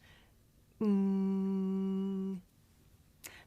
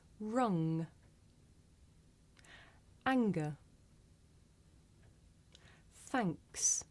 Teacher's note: we make this sound towards the back of the mouth